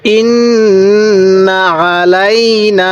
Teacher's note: উপর তাজদি থাকলে কি করতে হবে ওয়াজিব গুন্না করতে হবে তো নুনের উপর তাসদি আছে এজন্য আমরা এখানে ওয়াজিব গুন্না করবো